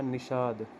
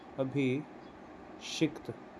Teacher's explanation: कुछ नहीं करना है, छोटे स का बड़े स में परिवर्तन करना है, दंत्य स का मूर्धन्य श में परिवर्तन करना है।